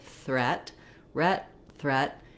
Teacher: You can feel, if I say the R first, my tongue is ready for the R. I just sneak it forward for that little TH sound and then pull it right back into that tight American R